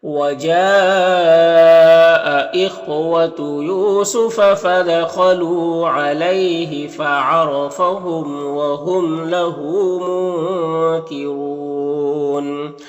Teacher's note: یعنی نون کی آواز کو ناک میں چھپا کر ایک الف کی مقدار کھینچ کر پڑھیں گے · یہاں پر وقف کی صورت میں مد عارض وقفی ہوگا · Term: اخفا